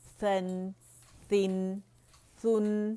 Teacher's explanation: स के साथ ब्लो थोड़ी बाहर आएगी हवा फील करें · سا کے ساتھ بلو تھوڑی باہر آئے گی ہوا، فیل کریں ہاتھ پہ